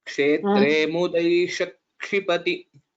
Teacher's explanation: so we'll have to give a bit of stress on kshi